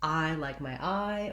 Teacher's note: the I is a diphthong, which means it's a vowel sound that glides between two positions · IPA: /aɪ/